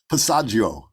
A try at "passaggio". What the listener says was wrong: No, don't do that. I don't think it's a Gio. I could be really wrong about that. Maybe any of my Italian friends will correct me, but I think it's just Joe. Passaggio.